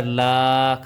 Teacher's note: پڑی جائے گی۔ میم لام زیر مل، لام کھڑا زبر لا، کھڑا زبر کو ایک الف کے برابر لمبا کیا